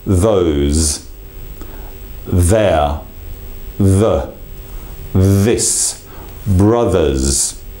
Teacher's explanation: we actually allow some voice to resonate through the tongue itself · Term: voiced version